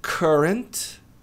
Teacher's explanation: esse U não tem som de U, tem som de A. Então, a pronúncia correta é current.